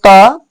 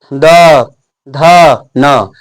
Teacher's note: तैसे हम बोलेंगे त तो ऊपरला दांत में जीभ पीछे से धक्का मारता है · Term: त वर्ग